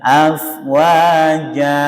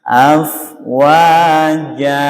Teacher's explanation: Wa dengan ja kita upayakan panjangnya imbang gitu ya. Jangan afwaja, berarti lebih panjang yang ja.